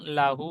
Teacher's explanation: ও মাত্রা বলবেন, ও মাত্রার সমতুল্য। সুতরাং উল্টা পেশকে ও মাত্রার মতো একালি পরিমাণ টান দিয়ে পড়তে হয়।